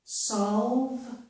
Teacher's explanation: we have the sound O followed by the sound V, and there's no vowel sound in the middle.